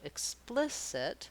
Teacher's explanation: vowels in explicit are the same vowel the difference is that the second syllable is held longer and the other syllables are held shorter so it's the same sound but the length is different so · we have second syllable stress so the plis or splis syllable is stressed and long · So the plis or spliss syllable is stressed and long. The ick syllable at the beginning and the it syllable at the end are short and reduced.